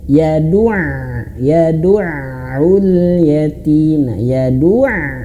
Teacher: masuk ke huruf ain yang tasydid maka ee dimasukkan ditekan ada nabrnya